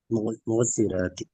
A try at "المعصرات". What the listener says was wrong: இந்த ஐன கலக்காம வரணும்.